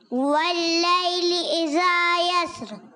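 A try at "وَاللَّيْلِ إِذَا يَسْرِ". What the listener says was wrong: اذا میں ذال کی ادائیگی اور کلیئر کریں، اس کی آواز بھی کلیئر ہونی چاہیے، اور یسر میں سین سیٹی کے ساتھ۔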